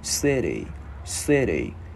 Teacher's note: Chữ T biến thành chữ đờ tiếng Việt